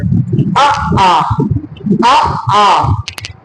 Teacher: आप ध्वनि देख रहे होंगे कहां से निकल रही है, कंठ से। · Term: कंठ स्वर ध्वनि